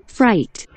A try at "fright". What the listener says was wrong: 자, flight처럼 들려. 을이 아니고 어야. fright. fright. fry him. fry. 계란 fry 할 때 fry him. fry. fry. fright.